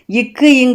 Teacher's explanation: நாவின் முதற்பகுதி அன்னத்தின் அடிப்பகுதியை பொருந்துவதால் பிறப்பது இக்கு இங்கு